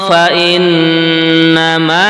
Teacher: namanya Fa ng Nah ada tanwin berjumpa dengan Fa yang kedua kalimat fainnama ini nunnya juga tasydid dibaca gunah mendengung